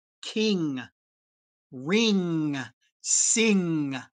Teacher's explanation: lift the back of your tongue up to the roof of your mouth put it actually on the roof of your mouth and make the sound from back there through your nose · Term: ng sound